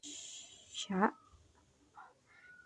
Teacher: mengangkat tengah lidah ke langit-langit disertai menyebarnya angin di dalam mulut